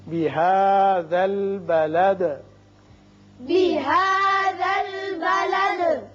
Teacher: یہاں وصل کی صورت میں آپ دال کے نیچے زیر پڑیں گی بلدی وانت، لیکن جب آپ وقت کرنا چاہیں چونکہ آیت ہے تو دال ساکن ہو جائے گی اور ساکن ہونے کے ساتھ ساتھ اس کی صفت قلقلہ بھی ادا ہوگی